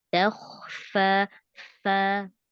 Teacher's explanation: fokuskan aja di bibir yang bawah itu, bagian dalam ketemu gigi seri, bibir atasnya diam aja.